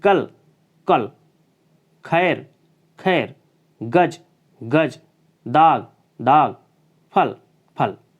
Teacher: ये उर्दू से लिया गया है, इसका उच्चारण करते समय घर्षण होता है। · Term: नुक्ता